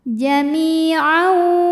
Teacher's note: tanwin ini dimasukkan ke wau disertai dengungan jahu hu hukumnya Mad Silah qirah karena ada H damir yang · Kemudian berikutnya ada hukum idgham bi gunnah karena ada tanwin fathah yang menghadapi huruf waw berharokat ya. Maka tanwin ini dimasukkan ke waw disertai dengungan.